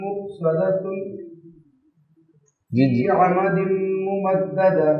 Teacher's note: اگر تو آپ ملائیں گے تو پھر آپ کو غنہ کرنا ہوگا، کیونکہ مؤصدۃن تنوین کے بعد فا آ گیا تو آپ کو اخفا کرنا ہوگا